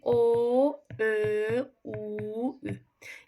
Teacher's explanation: Bu çox rahatdır. Dodaqlanan belə deyim də elə bil dodaqlar yumru bir vəziyyət alır, qabağa gəlir.